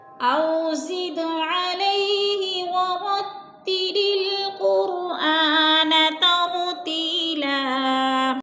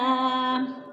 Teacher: دال ساکن ہے اور حروف قلقلہ میں سے ہے تو اس کو ہلا کر پڑھیں گے۔